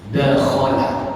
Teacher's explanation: kha itu dia di atas sendiri, tenggorokan paling atas